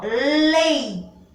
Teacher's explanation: Eu pronunciei o som ei de uma vogal com uma semivogal.